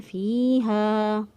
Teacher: فی کو بھی 1 الف کے برابر لمبا کیا، اور ہا کو بھی 1 الف کے برابر لمبا کیا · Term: یا مدہ